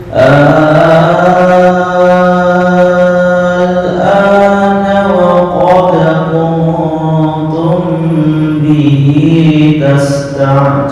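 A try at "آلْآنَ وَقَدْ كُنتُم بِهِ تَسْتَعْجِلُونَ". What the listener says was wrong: Oke, sekarang yang tashil. Belum. Itu tahqiq, bukan tashil. Ahal ana a'jamiyu ya al-ana bukan hamzah, bukan alif, bukan a, bukan antara keduanya. Ya, kalau bahasa kita bukan manusia, bukan hantu. Antara keduanya.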